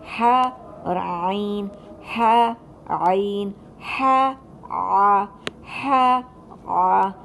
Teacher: फिर हलक का दरमियानी हिस्सा है वो जो कि वस्तुल हलक है, जहाँ से ह और आइन की अदायगी की जाती है।